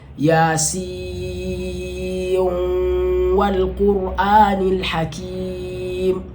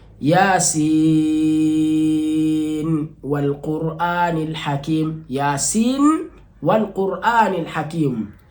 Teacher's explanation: Tukisema kudighimishwa, manake ni nuni katika kusomwa kwake inaingizwa katika wao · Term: idgham